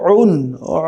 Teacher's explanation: উন কণ্ঠনালীর মধ্যভাগ থেকে, যেখান থেকে আইনের মাখরাজ